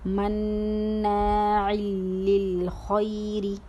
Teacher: اب یہاں پر تنوین کی بلا غنہ کی مثال ہے کیونکہ تنوین دو زیر کسرتین کے بعد لام آیا ہے، لام بلا غنہ کے ہیں، ادغام بلا غنہ والی مثال ہے تو ہم غنہ نہیں کر رہے لیکن مدغم کر رہے ہیں